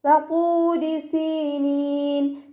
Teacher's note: വാവ് മദ് കൂടെ വന്നിട്ടുണ്ട്, 2 കൗണ്ട് നീട്ടിക്കൊടുക്കുക കേട്ടോ. റോ കെസ്റ ആയതുകൊണ്ട് നമ്മൾ താഴ്ത്തി ഉച്ചരിക്കുക · ത്വാ ഇസ്തിഅലാൻ്റെ ലെറ്ററാണ്, നല്ലോണം തഫ്ഹീം ചെയ്തിട്ട് ഉച്ചരിക്കുക · സീനിൻ്റെ കൂടെ യാ മദ് വന്നു, 2 കൗണ്ട് നീട്ടിക്കൊടുക്കുക. അവസാനത്തിൽ നമ്മൾ നൂനിന് ആരിഫ് സുക്കൂന് കൊടുത്തിട്ട് നിർത്തുമ്പോൾ 2, 4, 6 ഹർക്കത്ത് വരെ നീട്ടിക്കൊടുത്തിട്ട് നിർത്തുക.